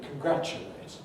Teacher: There's, you can see, contribute, but one at the top is an interesting one, which is for American English, which is the word congratulate. Now, in Britain, everybody says it with a voiceless ch